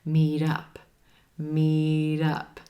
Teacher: that T at the end of meet, that's becoming a flap T. Sounds like a quick D.